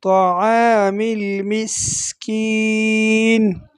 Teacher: سین میں آپ نے سیٹی کی آواز نکالنی ہے